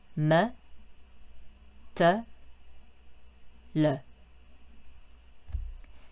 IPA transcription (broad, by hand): ə